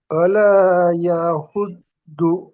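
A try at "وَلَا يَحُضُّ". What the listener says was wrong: না দ উচ্চারণ হবে না জ উচ্চারণ হবে, দুটির মাঝখান দিয়ে আওয়াজটি বার হয়ে আসবে। ওয়ালা ইয়াহুযু আলা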